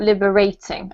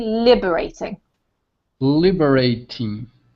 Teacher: the emphasis is on the first syllable